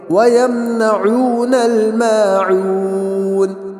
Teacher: آخری آیت اس کے اندر ذرا ہم غور کریں گے، وَيَمْنَعُونَ الْمَاعُونَ، وَيَمْنَعُونَ کے اندر عین، وہاں پہ ہونٹ گول کر وہ کریں گے، اور معون وہاں پر بھی دونوں جگہ پر جو ہے واو مدہ ہے، تو دونوں جگہ پر ہونٹ گول ہوں گے، تو ہم پڑھیں گے وَيَمْنَعُونَ الْمَاعُونَ، تو دونوں جگہ عین بھی ہے، عین کو صحیح سے ہم ادا کریں گے۔